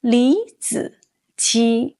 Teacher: When third tones are next to each other, like in 李子柒, the first one changes to a rising tone, almost like the second tone.